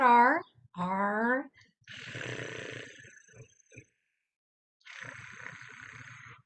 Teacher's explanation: the very tip of my tongue is relaxed with vibrating against the top of my mouth it's moving just little bits I hope you're able to purr